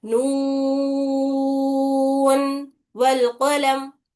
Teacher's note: लेकिन सैयद हफ्स रहमतुल्लाह अलैह की रिवायत में यहाँ पर इजहार करे, नून को साफ और वाज़ेह तरीके से पढ़े बिना गुन्ने के, नून वल कलम, ठीक है, ऐसा पढ़े उसको। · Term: इजहार मुतलक